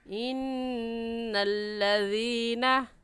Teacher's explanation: अपनी ज़बान की नोक दोनों दांतों के दरमियान में रखने से ज़ाल निकलता है